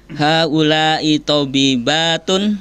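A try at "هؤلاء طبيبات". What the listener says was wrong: Titik ya. Kalau titik tuh berarti intonasinya berhenti ya. Ya. Haula'i tobibatun. Titik ya. Jangan naik. Kalau naik tuh kelihatannya kayak ada tanda tanyanya.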